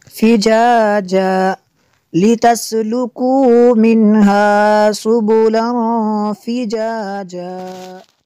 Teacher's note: تنوین کے بعد فا ہے حروف اخفا میں سے، تو یہاں پہ اخفا ہوگا، اس لیے یہاں پہ غنہ کریں گے